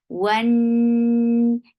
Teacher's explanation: One for wow, circle your lips for fatha open jaws attach it noon, will get sifa of gunna. This gunna is akmal, so keep the sound in your nose for a longer time.